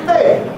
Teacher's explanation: It’s going to be a Fall, yeah. That’s the usual default for attention drawing, interjection.